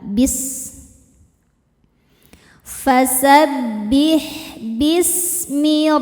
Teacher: Kalau sin ini desisannya mirip seperti suara ular. · sin ini salah satu sifatnya yang tidak memiliki lawan adalah shofir